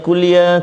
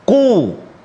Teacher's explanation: makhraj huruf qaf di pangkal lidah kita